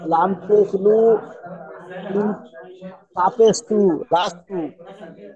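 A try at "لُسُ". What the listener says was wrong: আচ্ছা, লাম পেশ লু আর সিন পেশ সু বললেন, আপনি আপনার আপনার মতোই পড়াচ্ছি, অন্য কিছু না। তাহলে কি হয়, লাসু হচ্ছে তো, কিন্তু লাম পেশ লু সিন পেশ সু লুসু। তাহলে আপনি লাসু বলছেন, কখনো বলছেন লাসি, কখনো কি বলছেন আমি বুঝতে পারছি না তো।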